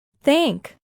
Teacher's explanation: este sonido no produce vibración en las cuerdas vocales es decir se produce solo con la fricción de la corriente de aire expulsada